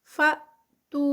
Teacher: یہاں پر حمزہ ہے اور حمزہ جو ہے وہ جزم کے ساتھ ہے تو جرک لگے گا